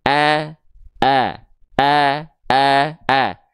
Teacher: pastikan vokal a fathah kita karakternya tipis